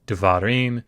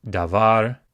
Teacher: It is pronounced devarim. It has come from an originally long A that has been reduced because we've shifted the accent away from it by putting the ending im on. So instead of saying davar, you say devarim. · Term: vocal Sheva